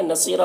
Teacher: صاد کو پر پڑھیں گے اور یہاں پر یا مدہ ہے، ایک الف کے برابر کھینچیں گے. را کو پر پڑھیں گے اور یہاں پر وقف کریں گے تو ایک زبر کے ساتھ الف پڑھیں گے.